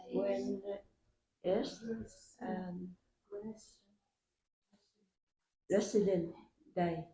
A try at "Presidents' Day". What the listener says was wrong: Presidents. Yeah. And see, because it has this S here, you have to say president's, president's, president's day.